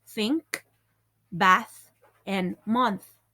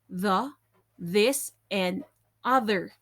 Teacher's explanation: both are made with a tongue behind the teeth